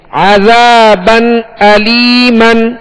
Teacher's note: عذا زال کے آگے الف ہے، الف مدہ ہے، 1 الف کی مقدار کھینچ کر ادا کریں گے